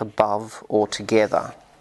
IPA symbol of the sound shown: ə